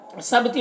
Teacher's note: با میں قلقلہ ہوگا